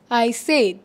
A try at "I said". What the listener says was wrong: ও স্যাড বলছে, ও আজকে স্যাড, কিন্তু স্যাড হবে না, উচ্চারণ হচ্ছে সেড। আর উচ্চারণটা হচ্ছে আই সেই, আই সেড।